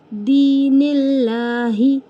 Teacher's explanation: اللہ لفظ سے پہلے زیر ہے اس لیے اللہ کو باریک ہی ادا کریں گے اور کھینچیں گے بھی کیونکہ کھڑا زبر ہے۔